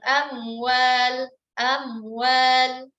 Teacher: Itu mim sukun berjumpa dengan waw, harus izhar, perjelas.